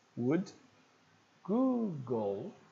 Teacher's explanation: a gente vai ver que o l não tem som de u como no português